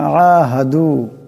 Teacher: আইন আছে, আওয়াজটাকে গলা থেকে আনতে হবে।